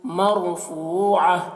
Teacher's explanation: را کو پر پڑھیں گے۔ فو میں واو کو کھینچیں گے۔ فوعہ، یہاں پر وقف کر رہے ہیں، آیت ہے تو اس وجہ سے یہ گولتا جو ہے وہ ہائے ساکنہ بن جائے گی، تو مرفوعہ ہو جائے گا۔